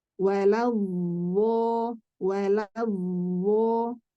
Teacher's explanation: makhrajnya tetap dari huruf dhad, hanya saja suara yang keluar seperti huruf dho · beliau membacanya seperti huruf dho, tapi makhrajnya tetap dari dhad. Ya, tetap dari sisi lidah, bukan dari ujung lidah.